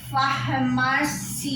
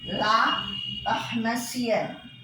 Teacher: The nasal, the tone was there, and here the N is doubled NN, but the vowel before it has lost its nasality